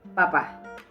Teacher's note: el paso de la corriente de aire se impide y se libera repentinamente